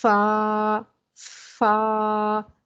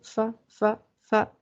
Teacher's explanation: تو اس کی ادائیگی کرتے ہوئے ہم 2 سیکنڈ کھینچ کے پڑھیں گے کیونکہ الف جو ہوتا ہے وہ کھینچنے کے لیے استعمال ہوتا ہے۔ جیسے فا، فا، ہم یہ نہیں پڑھیں گے فا فا فا، اس کا مطلب ہے ہم نے الف پڑھا ہی نہیں، تو ہم 2 سیکنڈ کھینچیں گے تاکہ الف کی بھی ادائیگی ہو۔